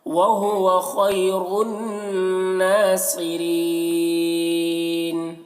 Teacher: بل اللہ مولاکم وہو خیر الناصرین، خو کو پر پڑھیں گے اور یہاں پر یا لین ہے، را کو پر پڑھیں گے، یہاں پر نون مشدد غنہ ہوگا، صاد کو پر پڑھیں گے، را کو باریک پڑھیں گے، اور یہاں پر وہی وقف کی صورت میں مد عارض وقفی ہوگا۔